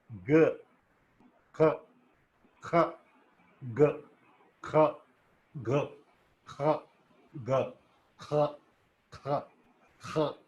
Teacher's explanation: the back part of the tongue is raised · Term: velar plosives